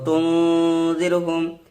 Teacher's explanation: হরুফ ইখফা যে 15টা আছে তার মধ্যে জাল এসেছে নুন সাকিনের পরে, এই জন্য এটা ইখফা করে পড়বো